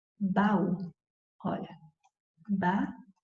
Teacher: O que dá para você perceber claramente é que o A e o U foram pronunciados separadamente. Então, pronto, aí você tem hiato.